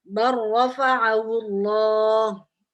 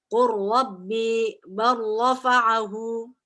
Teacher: lamnya hilang lebur tadi langsung ke ro, seperti ro bertasydid.